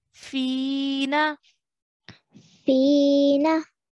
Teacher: we have to stretch the Phi sound for two counts · And then we have a ya sakin straight after, a ya mud. Okay, so we have to stretch the fi sound for 2 counts